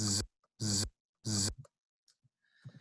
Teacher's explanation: you can hear that buzzing sound, and I'm doing this not to clear my throat, but to indicate my vibrating vocal folds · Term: voiced variant